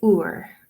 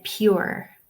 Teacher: the R at the end is pronounced pretty strongly in the Irish accent